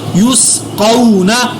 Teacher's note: نون زبر نا، یس قو نا. قاف کو پر ادا کیا اور واو لین کو لمبا بھی نہیں کرنا